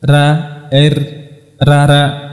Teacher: R yang ada dalam bahasa kita hanya dari punggung lidah saja